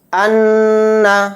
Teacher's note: اس طرح سے ناک میں تھوڑی دیر آواز کو بھن بھنانا ہے، یعنی غنے کے معنی ہوتے ہیں لغوی معنی ناک میں آواز کو بھن بھنانا۔ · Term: غنہ